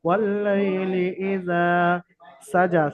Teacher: ওয়াল্লাইলি ইযা সাজা, সিনের উপর হারাকাত, জিমের উপর খারা যাবার, খারা যাবার আলিফ মাদ্দার সমতুল্য, সুতরাং জিমকে এক আলিফ পরিমাণ, খারা যাবার টান। জিমকে এক আলিফ পরিমাণ আলিফ মাদ্দার মতো এক আলিফ পরিমাণ টান দিয়ে পড়তে হবে। এই জন্য করে, কারণ হারাকাতটা কি জিমের উপরে এসছে।